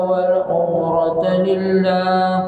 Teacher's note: Lillah, Allah dibaca dengan nipis, sebelumnya baris bawah.